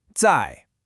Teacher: That's a 4th tone. It's sharp, it falls from high to low.